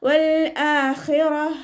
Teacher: താ മർബൂത്തയിൽ വഖഫ് ചെയ്യുമ്പോൾ ഹാ സുക്കൂനിൻ്റെ സൗണ്ട് കൊടുത്തിട്ടാണ് വഖഫ് ചെയ്യുക. വൽ ആഖിറത്ത് എന്ന് പറഞ്ഞിട്ട് നമ്മൾ സുക്കൂന് കൊടുത്തിട്ട് വഖഫ് ചെയ്യരുത്.